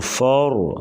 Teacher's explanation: रा के ऊपर ज़बर है तो रा को पूर्व पढ़ेंगे, और फ़र रा साकिन उससे पहले ज़बर, रा को मोटा करके पढ़ा जाता है